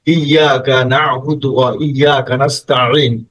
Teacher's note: আইনটা কিন্তু গলার মাঝখান থেকে বের হবে